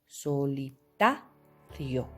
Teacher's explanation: En la palabra solitario no vemos una tilde gráfica, pero en esta palabra la tercera sílaba, que llegaría a ser la sílaba ta, lleva el mayor golpe de voz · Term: sílaba tónica